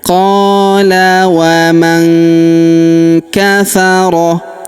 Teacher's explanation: huruf qa kita panjangkan 2 harokat karena terdapat alif di depannya.